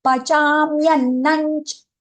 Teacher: The anuswara followed by the letter cha. So anch sound for that anuswara.